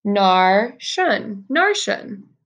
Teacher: You actually don't hear the K at all.